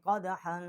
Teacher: یہاں پر غنہ نہیں کیا کیونکہ آگے جو ہے حروف حلقی ہے